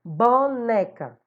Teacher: boneca também paroxítona está na penúltima